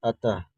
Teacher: दो अर्थ निकलता है आधा न और आधा म का और विसर्ग का जो उच्चारण होता है वह आधा ह का